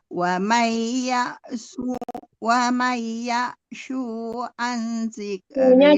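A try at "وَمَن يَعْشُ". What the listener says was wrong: jangan panjang ya Bu. Shu-nya tidak panjang ya Bu, jangan tertahan. Shu-nya tidak panjang itu tadi.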